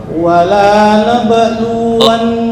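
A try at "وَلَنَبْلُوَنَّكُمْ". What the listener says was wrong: La pendek. Karena jika la dibaca panjang, itu artinya sama tadi. Antara positif dan negatif. Ketika dibaca panjang nih, wala nabluwannakum, artinya kami tidak menguji kalian. Tapi kalau wala nabluwannakum, sungguh kami akan menguji kalian.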